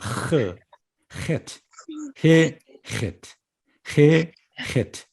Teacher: 헤트는 조금 더 분명하죠. 목을 긁습니다.